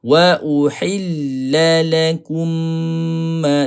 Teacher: mim bertemu dengan huruf mim kena ada dengung